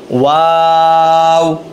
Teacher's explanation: ওয়াওটা ঠোঁট গোল করে শুরু হবে, গোল করেই শেষ হবে